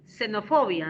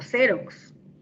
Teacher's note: la letra X puede representar al sonido fricativo alveolar, como en xenofobia